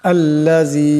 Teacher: আল্লাযী, এখানে জাল নিচে জের আছে এবং মদ আছে, জালকে পাতলা আওয়াজে পড়তে হবে এবং লম্বা করিয়া পড়তে হবে।